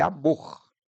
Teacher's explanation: A última sílaba é a sílaba tônica, mas ela não tem acento.